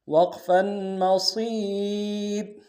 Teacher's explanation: وقف میں را کو باریک کریں گے